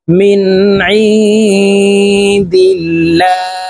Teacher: মিম নুন জের মিন, আইন নুন জের আইন, নুন সাকিনের পরে ইকফার হরফ দাল আসছে, তো এই নুনকে নাকের ভিতরে লুকাইয়া গুন্নার সহিত পড়ব।